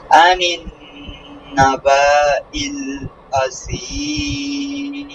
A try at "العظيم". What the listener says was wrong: আজিম বলা যাবে না, আযীম। সদ দ ত জ গইন খ কফ, এগুলো তো পড়িয়েছিলাম। এর মধ্যে ল আছে না, সদ দ ত জ, মোটা হরফ। আজিম বলে তো চিকন হয়ে গেল।